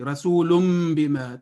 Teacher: जिस तरह यहाँ रसूलुम बिमा, ये वक्फ़ लाज़िम वाला मीम नहीं है, यहाँ पे ये इक़लाब वाला मीम है, यानी जब इसको आप रसूलन को बिमा के साथ मिलाएंगे तो तनवीन और बा को मिलाने के लिए मीम की आवाज़ आएगी